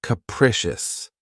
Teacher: this word has three syllables and the stress is on the second syllable keep in mind that the first syllable has that schah sound